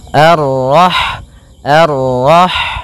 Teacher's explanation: Kemudian pada lafal rah di sini ada huruf ha yang berharakat sukun, dan sifat ha itu yang paling mencolok adalah sifat hamesnya, yaitu mengalirnya nafas ketika kita membacanya.